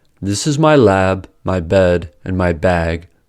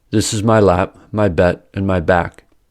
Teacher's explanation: When a pause follows after voiced plosives, ba, da, ga, they can sound like their voiceless counterparts, pa, ta, ka. For example, this is my lab, my bed, and my bag can sound like this is my lap, my bet, and my back. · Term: Devoicing of voiced plosives